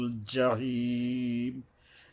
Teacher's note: লাতা র উন্নাল জাহিম, জিম উচ্চারণে সাবধান হতে হবে, গলা চেপে হলকের মাঝখান থেকে উপরে তালুর সাথে যায় মিশবে, মানে জিব্বার মাঝখান থেকে উপরে তালুতে গিয়ে মেশে জিম উচ্চারণটা